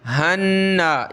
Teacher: नून को एक अलिफ की लिमिट में खींचेंगे, गुन्ना करेंगे। हन्ना, ये अलिफ वगैरह ये सारे नहीं पढ़े जाएंगे, हा डायरेक्ट नून से प्लस होगा।